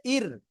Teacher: র সাকিন তার ডাইনে জের তাহলে কি উচ্চারণ হবে ইর চিকন করে পড়তে হবে